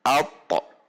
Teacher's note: bergetarnya lidah saat huruf sukun, sehingga akan terdengar tekanan yang kuat atau bunyi pantulan ketika membacanya. Sifat al-qalqalah ini muncul ketika huruf to sukun.